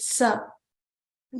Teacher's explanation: the so the the third ver which we learned and then sa is a dental so it is um going to be pronounced with the teeth behind the teeth